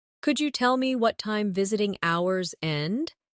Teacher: In connected speech, could you becomes could ya?